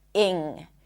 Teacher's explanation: Technically, it's a lax sound and then an ng. Doesn't have a g sound at the end. It's not ing. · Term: ing suffix